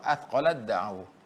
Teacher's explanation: Ta diidghamkan kepada dal. Tenggelam ta masuk ke dal.